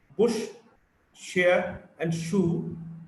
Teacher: Sh is a voiceless post-alveolar fricative.